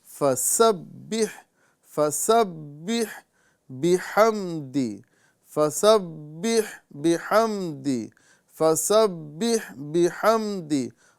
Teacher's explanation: یہاں پر ہمیں سین کی سیٹی کے ساتھ اسے باریک ادا کرنے کی کوشش کرنا ہے